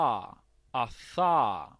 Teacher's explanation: स dental sound है, स दोनों दांत के बीच में आपकी जीभ लगा के आप स बोलते हो